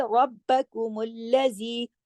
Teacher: را موٹا پڑھا جائے گا، تشدید ہے، با سے سختی سے جوڑا جائے گا